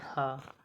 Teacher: ह वर्ण घोष तथा महाप्राण दोनों यह उष्म व्यंजन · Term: घोष महाप्राण